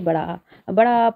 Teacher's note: आपका पूरा मुख खुल रहा है ठीक है तो विवृत स्वर जिन स्वरों के उच्चारण में मुख पूरा खुल जाता है वहां पर विव स्वर होता है